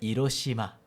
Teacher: Porque o H em japonês sempre é pronunciado, aspirado